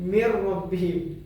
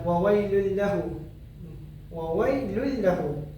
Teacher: hukum nun sakinah bertemu dengan huruf ra adalah terjadi idgham bila gunnah dan tidak perlu dengung. Jadi kita hanya perlu memasukkan dia ke dalam huruf tersebut.